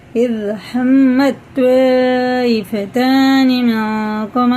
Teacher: अलिफ के ऊपर मद है और इसके बाद हमज़ा है, तो इसको हम 4 अलिफ के बराबर खींच के पढ़ेंगे। मद मुत्तसिल है।